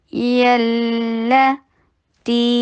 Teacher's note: लाम के ऊपर तवस्सुत का टाइम दीजिए, फतहा के लिए जबड़े को खोलिए और शॉर्ट रखिए